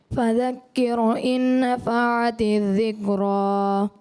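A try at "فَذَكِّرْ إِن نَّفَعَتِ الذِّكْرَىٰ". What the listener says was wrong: فذکر کی راہ کو باریک کرنا ہے، آپ نے پر کر دیا. فذکر کر نہیں کر. فذکر ان نفعت الذکریٰ، ذکریٰ پھر راہ پر کرنا ہے.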